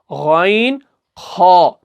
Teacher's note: गैन जो कि ऊपरी हलक से निकलता है, खा जो कि ऊपरी हलक से निकलता है